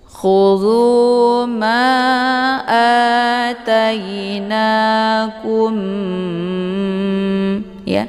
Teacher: Kum ditahan dulu, ya, sehingga terbentuk suara yang mendengung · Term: ikhfa syafawi